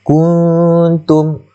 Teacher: Pada kuntum itu nun mati bertemu dengan ta, maka hukumnya adalah ikhfa hakiki. Cara bacaan dia kena dengung samar-samar di antara kaf dan juga ta tu.